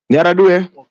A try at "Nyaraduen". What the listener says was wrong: it's Nyaraduen. Please pronounce that last N.